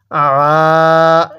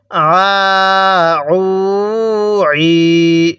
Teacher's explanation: আইনটা উচ্চারণের সময় গলার মাঝখানে একটু চাপ দিলে আইনটা সহি উচ্চারণ হবে